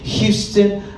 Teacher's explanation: Houston's got kind of a whisper to it, a pinpointed whisper to it.